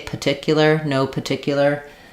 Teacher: that first R is a little bit optional